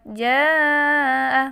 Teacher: Dibaca panjang 3 alif atau 6 harokat. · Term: mad wajib mutasil